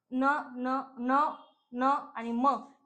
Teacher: ज्या व्यंजनांचा उच्चार नाकातनं केला जातो त्या व्यंजनांना अनुनासिके असे म्हणतात.